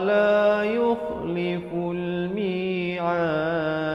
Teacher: diwakafkan dengan 2, 4 atau 6 harakat dan diberikan pantulan kerana dal merupakan huruf qalqalah